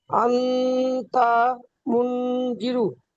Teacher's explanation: আবার আমার সাথে বলেন, নুন সাকিনের পরে হরফে ইকফার 15টি অক্ষরের মধ্যে তা এসেছে, তাই নুন সাকিনের আওয়াজকে নাকে তুলে এক আলিফ পরিমাণ গুণনা করে পড়তে হবে, একে ইকফা বলে।